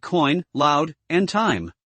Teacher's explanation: sound in which two vowels are pronounced within the same syllable the first vowel is more emphasized and gradually slides into the second vowel creating a single gliding sound